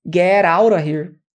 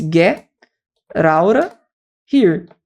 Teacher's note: Assim como nós, falantes do inglês, nós temos que saber que get out of here normalmente vai ser abreviado. Esse T com O, com som de R.